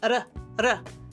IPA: ɾ